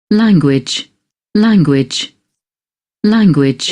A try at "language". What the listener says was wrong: is not A, it's E. There is no sound called A. In 44 sounds, there is no sound called A is there, but A is not there. A is not there in English.